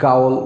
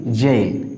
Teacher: তারপরে দেখো জেইল, আমরা সাধারণত এটা সবাই ভুল করব উচ্চারণে, কারণ আমরা এটা সাধারণত উচ্চারণ করে থাকি গাউল, বা কেউ কেউ বলে গোল, but it will be জেইল। খেয়াল করো এখানে জি এর উচ্চারণ জ হয়েছে।